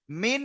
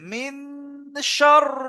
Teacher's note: টি অক্ষরের মধ্যে কি এসছেশিন এসেছে তাহলে কি করে পড়তে হবে নাকে তুলে এককালি পরিমাণ গুণনা করে পড়তে হবে তাহলে নাকে তুলে গুন্না করতে গেলে একটু গুনা করতে হবে একালি